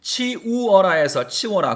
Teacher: 치우에서 이 단모음이 치워라의 요 반모음이 됐으니까 단모음이 반모음으로 교체가 되었다고 보셔야 돼요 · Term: 단모음의 반모음화